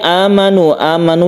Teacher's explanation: Hamzah diganti menjadi Hamzah yang dibaca panjang satu Alif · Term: mad badal